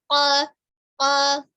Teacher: Dan sifatnya adalah jelas ya. Bunyi ko tidak ada hembusan nafas yang mengalir ya ketika pengucapan bunyi ko.